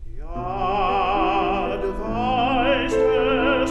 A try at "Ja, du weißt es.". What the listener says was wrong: No discreet scoop. Yeah? No discreet scoop. No scoop at all.